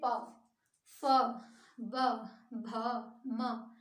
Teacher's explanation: है हवा है जब हम ओट व्यंजन का उच्चारण करते हैं तो ओठ दोनों आपस में गति करते हैं मतलब ओठों के स्पर्श से निकलते हैं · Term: ओष्ठ व्यंजन